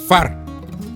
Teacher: It is pronounced F. So you bring the lower lip of your mouth to block with the upper teeth, upper front teeth of your mouth.